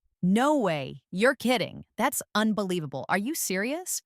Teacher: Try saying them with emotion. Feel the rise in your voice when you express surprise. The energy in your tone makes the English feel alive.